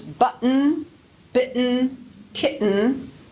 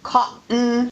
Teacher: we actually are using a glottal stop before the final n sound but you don't really hear a t